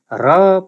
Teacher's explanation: र उच्चारण हुँदा जिब्रो काँपेको हामी अनुभव गर्छौँ। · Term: प्रकम्पित